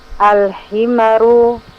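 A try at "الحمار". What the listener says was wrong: Al-himaru. Panjangkan mimnya.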